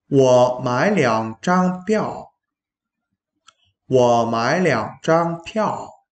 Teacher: Từ piào, bạn cố gắng bật hơi một chút nhé. Bởi vì đây là âm P, phải bật hơi.